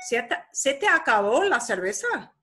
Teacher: When the intonation, the fluctuation of your voice goes up, they're asking you a question at the end.